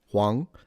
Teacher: It's also the word for yellow, and it's pronounced Huang. Second tone, Huang.